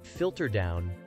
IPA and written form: ˈfɪltər daʊn (Filter down)